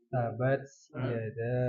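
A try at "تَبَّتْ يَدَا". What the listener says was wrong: Ada tasdid di situ. Tabat. Wa tab sama ada tasdid juga.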